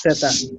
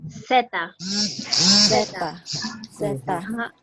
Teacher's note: In Spanish, you don't make the buzzing sound that you have to make in English.